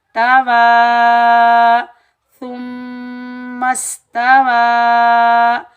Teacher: ये मद्दे मुनफसिल जायज़ है, इसको हम 3 अलिफ की मिकदार खींच कर अदा करेंगे। 2.5 अलिफ की मिकदार भी खींच कर अदा कर सकते हैं और 3 अलिफ की मिकदार भी खींच कर अदा कर सकते हैं।